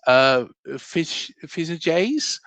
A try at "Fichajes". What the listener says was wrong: Fichajes, like in Spanish, the J is pronounced H.